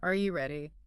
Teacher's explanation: My voice goes up high at the very end. It climbs a tiny ladder. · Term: intonation